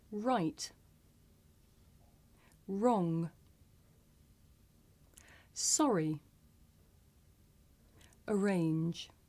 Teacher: My lips come out and I pull my tongue back.